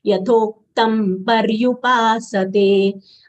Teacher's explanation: Anuswar sound is half ma, as it is followed by pa of paryupasate. Pa belongs to the label group, that is papa baba ma.